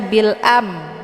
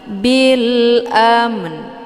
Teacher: yaitu mim ya maka cara bacanya kita bunyikan makhrajnya dua-dua jadi mim juga dibunyikan kemudian disertai juga dengan bunyi n di ujungnya